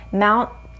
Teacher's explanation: so you're not releasing the air for the t you're producing the same tongue behind the teeth top part where